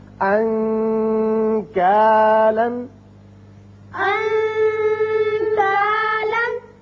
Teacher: کاف یہاں نون کا جو آپ اخفاء کریں گے تو تھوڑا سا غننے کی طرف زیادہ مائل ہوگی آواز